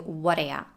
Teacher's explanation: The words what do you and the question what do you need got reduced to what ya.